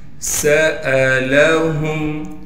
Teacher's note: سین کو سیٹی نکال کر پڑھنا ہے